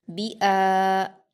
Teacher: बा पर हरकत है, जल्दी पढ़ेंगे। हमज़ा पर खड़ा ज़बर है, इसको हम अलिफ मद्दा की तरह दो हरकत खींचेंगे